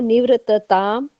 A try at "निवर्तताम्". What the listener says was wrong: निवर्त। र में थोड़ा। हाँ, ऊपर के र में गड़बड़ करते हो सारे। ऊपर र तो पहले के साथ। हाँ, निवर्तताम।